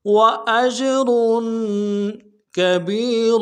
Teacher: جیم جب ساکن ہو یعنی جزم ہو تو قلقلہ ہوگا